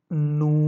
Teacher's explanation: اور اگر نون کے اوپر آ جائے گا پیش، الٹا پیش، تو آپ اس کو بھی ویسے ہی پڑھیں گے، پیش کی آواز دیتے ہوئے ہی اس کو آپ نے کھینچ کے پڑھنا ہے